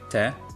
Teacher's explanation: At the end of a word, [ę] becomes a regular non-nasal [e] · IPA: [te]